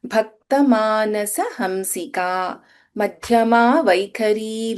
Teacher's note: in madhyama dha is mahaprana in vaikhari kha is mahaprana